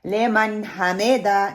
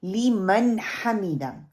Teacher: آپ نے ان کو مجہول نہیں پڑھنا، مجہول مطلب کہ پھیلا کے نہیں پڑھنا